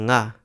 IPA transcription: ŋ